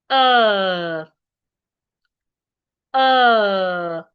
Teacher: Make sure that your jaw, your lips, and your tongue are in relaxed position. And then make it long. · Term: long vowel sounds